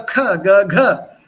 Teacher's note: This aspirated stress on the consonant, these aspirated sounds are not there in European languages.